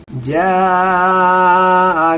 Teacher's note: बड़ी मद में थोड़ा ज़्यादा खींचना है, 4 अलिफ या 5 अलिफ की मिकदार से खींचते हैं इसको